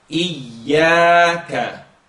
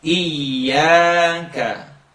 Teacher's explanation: Try not to let the air escape and get like a zh sound.